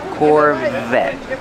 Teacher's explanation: te is a stop T the E is silent Corvette Corvette pronounce the V with voice